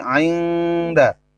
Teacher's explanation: Cara membaca nun matinya samar atau dengung. Ainda, bukan ainda, tapi ainda. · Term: ikhfa